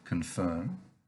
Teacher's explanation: the o in the con is pronounced in english like a schwa an uh sound